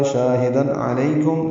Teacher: تنوین کے بعد عین آنے کی وجہ سے اظہار ہوگا